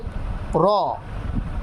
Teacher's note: জিহ্বার আগার পিঠ তার বরাবর উপরের তালুর সঙ্গে লাগাইয়া উচ্চারিত হবে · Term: 10 নাম্বার মাখরাজ